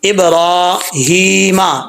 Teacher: را کے اوپر کھڑا زبر ہے، اسٹینڈ زبر، تو اس کو لمبا کر کے پڑھنا ہے، ایک الف کی مقدار